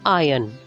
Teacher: you should pronounce it as iron the r should be silent